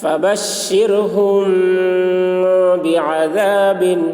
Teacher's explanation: میم ساکن کے بعد با آ رہا ہے اس لیے غنہ کے ساتھ اخفا ہوگا، اس کو اخفاء شفوی کہتے ہیں